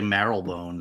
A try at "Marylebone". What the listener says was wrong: Marylebone. Yeah. You don't say the Y in Mary. It's not Marylebone.